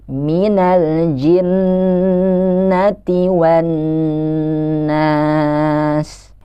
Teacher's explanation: Dan ayat terakhir, minal jinnati wan nas. Di situ ada nun yang berharokat tasydid yang harus kita tahan ketika kita baca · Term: Nun yang berharakat tasydid